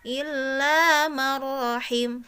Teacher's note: Nah, di sini juga ada nun mati bertemu dengan huruf ro ya. Bunyi n-nya itu dibuang kemudian masuk ke huruf ro tapi tanpa disertai gunnah